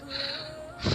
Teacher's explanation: You can read fa by the touching your upper teeth with your bottom lip. फा यानी ऊपर वाले teeth को नीचे वाले होंठ के साथ चिपका के आप इसको पढ़ सकते हैं।